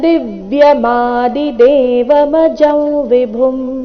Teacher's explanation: ಮೇಲೆ ಕೊನೆಯ ಚರಣ ಪ್ರಾರಂಭ ಆಗ್ತಾ ಇದೆ ಆದಿದೇವ ಆ ಸ್ವರದೊಂದಿಗೆ ಮೂಲದಲ್ಲಿ ಹೇಳಬೇಕಾದರೆ ದಿವ್ಯಂ ನಲ್ಲಿನ ವ್ಯಂಜನ ಮಂದಿನ ಚರಣದ ಅ ಸ್ವರ ಅ ಜೊತೆಗೆ ಸೇರಿ ಅದು ಪೂರ್ಣಾಕ್ಷರ ಮ ಆಗುವುದು